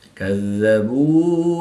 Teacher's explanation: واو ساکن سے پہلے با پر پیش ہے تو واو مدہ ایک الف یعنی 2 حرکات کے برابر کھینچ کر پڑھیں گے۔